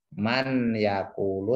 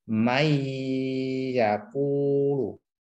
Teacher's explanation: nunnya hilang, masuk ke ya. Itu namanya idgham bi gunnah. Jadi masuk ke huruf setelahnya.